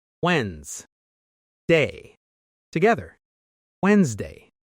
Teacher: We don't say the first D. Wed-nes-day becomes Wednesday.